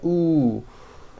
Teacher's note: Again, and notice how my jaw is opening on each one. And also notice how my lips are coming forward all the way on the ooh sound